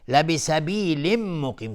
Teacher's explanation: تنوین بعدش میم ادغام با غنه. مقیم، قاف از حروف استعلاست غلیظ تلفظ میشه.